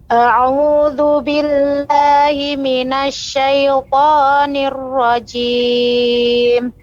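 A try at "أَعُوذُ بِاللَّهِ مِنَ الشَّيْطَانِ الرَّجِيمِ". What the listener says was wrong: Ya, huruf jimnya Ibu. Huruf jimnya lebih dikurangi tekanannya huruf jim. Nirrajim dengan nirraji lebih kuat jim. Lebih dilembutkan lagi sedikit.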